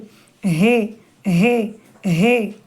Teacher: நாவை மேலே உயர்த்த வேண்டாம். குரல் அடித்தொண்டையிலிருந்து மெல்லியதாக ஒளிக்க வேண்டும். அழுத்தமாக ஒளிக்க கூடாது.